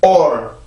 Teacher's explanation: 지금 앞에 자음이 없기 때문에 내가 이 도움을 받을 게 없으니까 순수하게 몸으로 내가 강세음절이 시작이 될 때는 성대로 공기를 한번 딱 막아주면 돼요